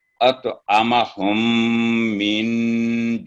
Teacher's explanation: नून साकिन यहाँ पर इख्फा का रूल अप्लाई हो रहा है, यहाँ भी 2 सेकंड का गुना होगा. अत आमा हम मिन जू, यानी आइन को साथ टच करना है, उसको हल्का सा आइन पर जज़म लगा के इसको साकिन करेंगे.